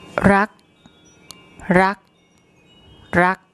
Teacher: You'll hear the unreleased K sound as a final consonant